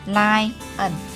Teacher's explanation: chữ này sẽ có hai âm, nhấn âm đầu mọi người ha. Tách ra chính giữa.